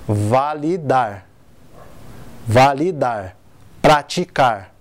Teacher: começando pela oxítona né que a sílaba tônica é a última